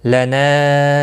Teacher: مد منفصل ہے، تین الف کے برابر کھینچ کر پڑھیں گے